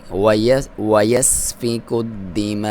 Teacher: مد واجب ہے، 3 سے 5 الف تک لمبا کر سکتے ہیں ۔ دال کو دبا کے پڑھیں گے کیونکہ اس پہ شد